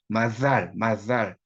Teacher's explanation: 시옷 발음은 시옷과 지의 중간 발음이에요 시옷과 지의 그니까 마살 아니고 마찰도 아니에요 마살 마살 이런 식으로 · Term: 반치음